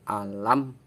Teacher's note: bertemu dengan huruf nun hukum bacaannya Idhar Syafawi Idhar artinya jelas syafawi itu huruf yang keluar dari dua bibir jadi suara mim sukunnya itu dibaca jelas